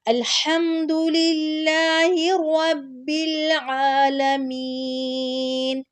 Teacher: اس کے بعد عالمین، جو میم آ رہی ہے اور یا ساکن آ رہی ہے اس سے پہلے زیر آ رہی ہے تو اس کو بھی تھوڑا سا کھینچ کے پڑھیں گے · رب العالمین. عین کو حلق کے درمیان سے نکالنا ہے، اس کے بعد عین پہ کھڑی زبر ہے تو عین کو لمبا کریں گے